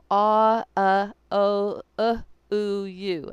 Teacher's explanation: In any case, they will notice that down at the base of this valley, my mouth is big and open, ah, and then when I went up, my mouth kept getting more and more tight till I got to the ooh or you, where my mouth is very tight. And then I've explained that these are really sounds that are really like sliding together.